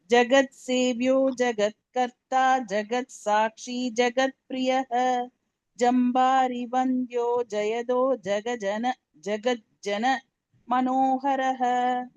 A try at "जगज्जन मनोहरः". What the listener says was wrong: ஜகஞ்சன வேண்டாம் எல்லாருமே மாத்திக்கோங்க ஜகஜன மனோகரக okay next